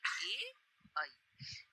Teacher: ये दोनों स्वर कंठ और तालु दोनों से उच्चारित होते हैं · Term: कंठ तालव्य